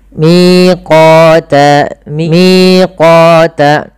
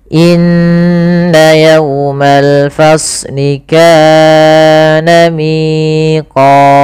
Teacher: Miqata sama panjangnya 2 harakat. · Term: mad tabi'i